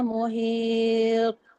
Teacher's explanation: Bukan dia huruf ta ni dia huruf qalqalah. Qalqalah dia tebal. Dia macam qaf. Ha kalau qaf dengan ta qalqalah dia kena tebal.